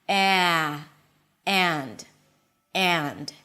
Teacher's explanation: And but when the as in cat appears before an n sound then it turns to something like a. You hear this transitional sound as if you're starting with an e and then gradually opening it to an a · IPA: eənd